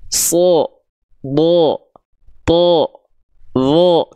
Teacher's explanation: ketika berharakat dia tidak terdengar jelas vokal A tapi malah condong seperti vokal o Kenapa karena dia dibaca dengan keadaan yang tebal ya dia dibaca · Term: huruf tebal